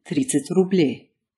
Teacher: And if you run into a d and a ts together, then instead of trying to stumble your way through saying dts, you can skip the d and just say ts